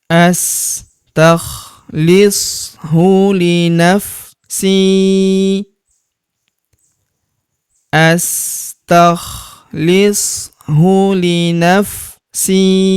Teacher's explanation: Huruf si kita panjangkan dua harakat karena terdapat ya sukun di depannya